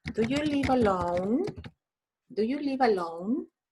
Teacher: That's rising intonation, like in Chile, in Spanish.